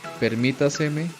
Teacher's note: La diferencia es que el acento cambia totalmente. La ubicación se encuentra en la trasantepenúltima sílaba